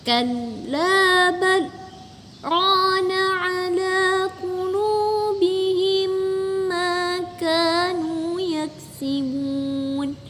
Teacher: di antara kallabal dan rona ada saktah, maka berhenti sebentar tanpa bernafas